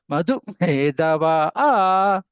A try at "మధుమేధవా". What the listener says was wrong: ఒత్తు మాత్రం చెప్పండి. మధు మేధ అన్నిటి కూడా ఒత్తులే.